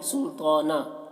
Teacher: جب وقف کریں گے سلطانہ میں تو ایک زبر کے ساتھ الف پڑھا جائے گا، تو سلطانہ ہو جائے گا، سلطانن نہیں، سلطانہ۔